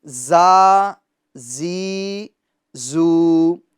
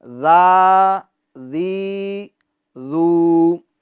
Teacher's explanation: یہ جو حرف ہے زا، اس کو ہمیں سختی کے ساتھ پڑھنا ہے اور حرف ذال کو ہمیں نرمی کے ساتھ پڑھنا ہے۔ اگر آپ ذال کے اندر سختی پیدا کریں گے تو یہ اس کے اندر زا کی آواز پیدا ہو جائے گی، یعنی زال زال، یہ غلط، بلکہ ذال ذال، نرمی نرمی کے ساتھ پڑھنا، یہ اس کی خوبی، یہ اس کے اندر صفت پائی جاتی ہے۔